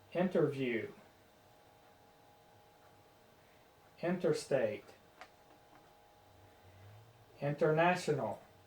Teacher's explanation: in some cases the t gets dropped out all together it's not changed to a d it's changed to nothing